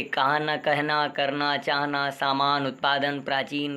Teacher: ना के उच्चारण में वायु दांत को छूती हुई नाक से निकल जाती है